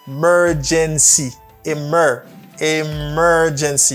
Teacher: Stresses on the second syllable, you say mer.